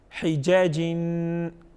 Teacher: हिजाजिन, next word जो है वो क्या है हिजाजिन, हिजाजिन, किस तरह पढ़ेंगे हिजाजिन, हिजाजिन, वक्फ हिजाज। जीम को क्योंकि हुरूफ क़लक़ला में से हैं तो यहाँ पर इसको वजाहत के साथ पढ़ेंगे